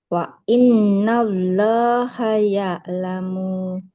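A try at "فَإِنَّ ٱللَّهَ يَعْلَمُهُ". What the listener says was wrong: Mimnya nggak boleh panjang. Di sini mimnya dhamma, di depannya nggak ada huruf waw, nggak panjang ya. Fa innallaha ya'lamuh. mimnya jangan panjang. Muh. Nah, karena mimnya dhammah tidak bertemu waw, nggak boleh kita panjangkan.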